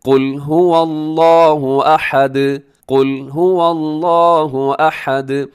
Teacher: دال کو آپ نے ہلانا ہے، اس کی آواز کو ڈبل کرنا ہے کیونکہ وہ حروف قلقلہ میں شامل ہے